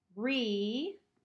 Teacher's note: I'm hearing that long A sound, so it's not making the schwa sound here.